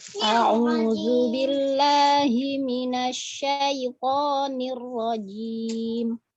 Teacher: huruf nir rajim itu nggak ada matnya, jadi langsung, jangan panjang.